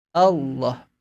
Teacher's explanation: huruf lam tebal satu-satunya hanya muncul dalam pengucapan lafaz Allah